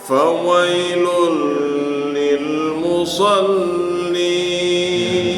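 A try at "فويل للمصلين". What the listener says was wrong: Tasdidnya terlalu sedikit.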